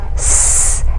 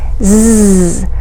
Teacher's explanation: Try those sounds. Now our tongue behind our teeth for s, and its voiced counterpart, z, both continuants.